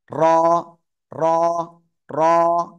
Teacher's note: জিহ্বার আগার পিঠ তার বরাবর উপরে তালুর সাথে লাগবে লাগিয়ে লাগিয়ে এক আলিফ টেনে উচ্চারণ করব